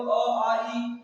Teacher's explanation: जिनके उच्चारण में हवा सिर्फ मुंह से निकलती है वो क्या कहलाएंगे निर्नुनासिक या मौखिक